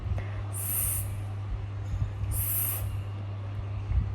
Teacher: There are s and so in order to pronounce s, you have to use the tongue is close to the alveolar ridge but does not touch it